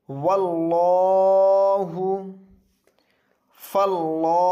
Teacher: لفظ اللہ سے پہلے زبر آیا یہ پر ہوگا